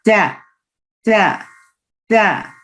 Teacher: your tip of your tongue will touches the behind of your front two teeth